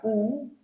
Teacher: Vean cómo el formante 2 desciende, porque cuando yo pronuncio la letra U, primero mi lengua se va hacia la zona posterior de la boca y además los labios los redondeo